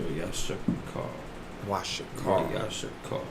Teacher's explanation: And in that case, you know, that vowel sound gets added to the ka. So now that ra, that vowel sound drops off. And it joins, it's connected with the ka.